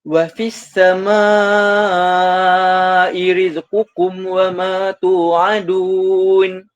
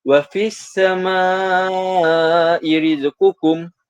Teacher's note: Kalau dalam Rasam Usmani ni kita dapat lihat bacaan as-sama'i itu dibaca secara 4 hingga 5 harakat. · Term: mad wajib mutasil